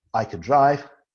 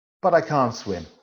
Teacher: the auxiliary verb can it's the schwa sound because it's affirmation in the second part of the sentence it's negative and it's an extended vowel sound